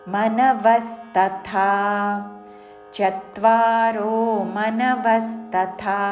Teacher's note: చివరిలో థా మహాప్రాణాక్షరము థా దీర్ఘముతో తద్ధా అని ధా పలకకూడదు